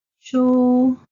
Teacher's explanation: You can hear the sound of shu without any ups and downs or transitions. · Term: first tone